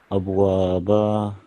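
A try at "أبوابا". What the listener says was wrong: Abwaba. So just slightly longer, elongation.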